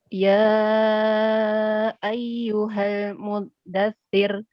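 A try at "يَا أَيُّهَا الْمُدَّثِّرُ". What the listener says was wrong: Hati-hati, ya bertasydid harus dinaberkan. Ya ayyuha. Fa-nya dialirkan juga. Muddatsir.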